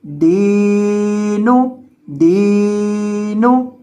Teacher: نون پیش نو، دینو، دینو، یعنی دال کو لمبا کرنا ہے کیونکہ اس کے بعد یا مدہ ہے، اور نون کو لمبا نہیں کریں گے کیونکہ نون کے بعد مد نہیں ہے